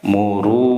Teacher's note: Ini tajwidnya mad asli dua harokat ya, panjangnya dua harokat.